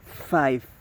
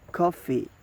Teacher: the voicing is voiceless, don't vibrate, and the place of articulation is labiodental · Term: the f sound